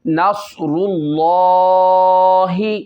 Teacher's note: صاد جو ہے اس میں سیٹی بھی نکالنی ہے، اس کو موٹا بھی کرنا ہے کیونکہ یہ ہیلدی پڑھے جانے والے ورڈوں میں آ رہا ہے، حروف مستعلیہ میں سے آ رہا ہے، اس کو پر کرنا ہے۔